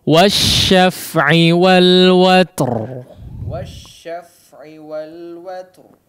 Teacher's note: Huruf ta juga diperhatikan ya, ada hamsnya, meskipun mungkin tidak terlalu jelas ya